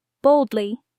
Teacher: connect the D and L smoothly boldly no big pause between D and L